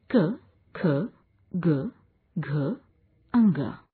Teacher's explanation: कोमल तालव्य। इन वर्णों के उच्चारण में जिह्वा कोमल तालु का स्पर्श करती है